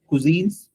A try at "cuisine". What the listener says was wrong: Because we found little sha sound in it. You said something like cuisine.